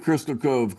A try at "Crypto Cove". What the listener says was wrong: Crypto, not crystal. Crypto.